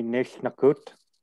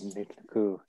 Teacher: The T falls off in the command form.